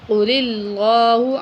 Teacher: اللہ کو باریک پڑھیں گے یہاں پہ